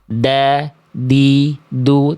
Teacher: huruf dal itu dilafalkan dari ujung lidah menyentuh ke pangkal gigi seri atas kita. Ya, jadi ujung lidah kita sama sekali tidak menjulur ke area luar mulut, enggak melet, enggak ngelal.